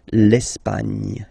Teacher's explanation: don't insist on the final E because basically it's not pronounced.